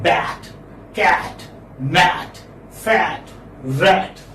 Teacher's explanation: So this is front, open, unrounded vowel.